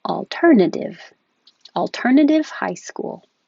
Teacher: we can change the second T to a D